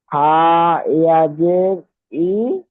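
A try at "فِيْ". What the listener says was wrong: ফা ইয়াজের ফি, একবার ফি বলছেন একবার ই বলছেন। ফি,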